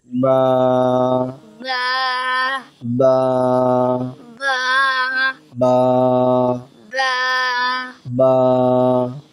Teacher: আলিফ বা বা বা বা দুই ঠোঁটের শুকনো অংশ থেকে উচ্চারিত হয় বা, দুটোতে বীজা অংশ থেকে, দুই ঠোঁটের বীজা অংশ থেকে একত্রিত হয়ে উচ্চারিত হয় বা